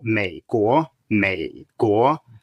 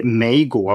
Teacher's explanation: You start low and you go down a little bit, but just think of it as a low tone. It's fine. And then you rise on the second one.